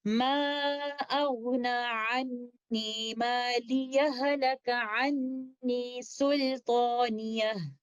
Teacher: The second way is actually idgham kamil, where we will not do sakt. In fact, we will merge the first letter ha into the second letter ha, which is mutaharrik, and this will be idgham kamil, and this is how we will recite it.